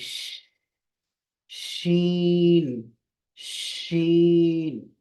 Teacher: शीन में आवाज भरी हुई होगी मुंह में हवा भरेगी आवाज जारी रहेगी